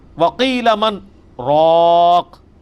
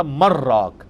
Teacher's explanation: کلا اذا بلغت التراقی، ہاں ہاں جب جان ہنسلی تک پہنچ جائے گی، وقیل من راق، یہاں پہ سکتا ہے، ایک ہی سانس میں پڑھنا ہے لیکن تھوڑا سا وقفہ کر کے